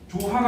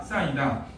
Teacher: 히읗 뒤에 모음이 왔을 때 히읗 탈락한다 · 히읗이 탈락하고 그 원래 남아있는 발음 있지, 받침, 그 받침이 뒤로 넘어가는 거야